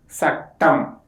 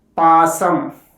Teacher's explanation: The sound sa is called alveolar fricative. The sound is produced by the tongue touching near the alveolar ridge, and the air flow is forced through the narrow gap. If the letter sa get doubled or geminated in a word level, it is pronounced as cha.